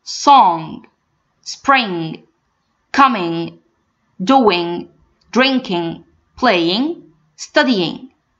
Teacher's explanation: So right now, if any word ends in ING, or by the way, guys, if it ends in ING or NG only, I'm going to raise the back of my tongue, the back, and get the vibration from my nose. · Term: ing sound